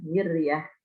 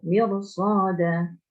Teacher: Miryah tipis, tapi kalau mirsad tebal ya, tafkhim.